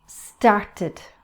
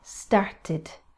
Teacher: Notice the id, started, because start finishes in a T, start. So we have to add the id sound afterwards.